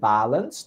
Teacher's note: The word balance, the stress in the first syllable, balance, not balance.